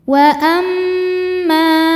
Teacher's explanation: Mad tabi'inya alif didahului fathah pada kata amma dan hamzahnya yaitu yang i pada kata ingkana. Maka mimnya dipanjangkan boleh 4 boleh 5 harokat. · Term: mad jaiz munfasil